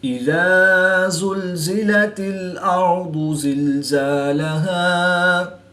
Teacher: الف مدہ کو وقف کی حالت میں تبدیل نہیں کریں گے بلکہ ایک الف یعنی 2 حرکات کے برابر ہی کھینچ کر پڑھیں گے